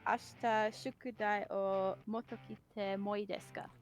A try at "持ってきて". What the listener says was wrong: motekite. So mote. 持ってきて。